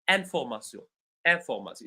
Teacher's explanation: But if we say it in French, all the syllables in the word information have the same level